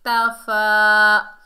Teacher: تا کو باریک پڑھیں گے اور فا کے اوپر کھڑا زبر، ایک الف کی مقدار کھینچ کر پڑھیں گے